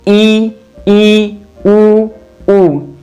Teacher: संवृत की बात करें, संवृत का मतलब होता है बंद होना। तो संवृत स्वर वो स्वर होते हैं जिनके उच्चारण में मुख द्वार जो है वो बंद होते हैं। उच्चारित कीजिए आप, देखिए ई, उ, उ।